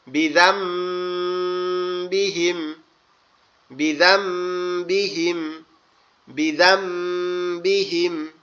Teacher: পরেরটা হচ্ছে এখানেও কি আছে, নুন সাকিন আছে, তার বাম সাইডে বা আছে, তাহলে নুনটাকে পরিবর্তন করে মিম করতে হবে